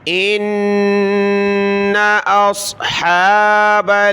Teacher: ان اصحاب صاد کو موٹا کیا، اصحا کھڑا زبر ہے، ایک الف کی مقدار ہا کو کھینچا